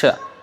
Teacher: the tongue is at the cha location, that means the palate, upper palate